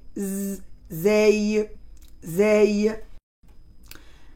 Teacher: c'est comme on fait un sifflement qui ressemble à celui d'une abeille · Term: la lettre Z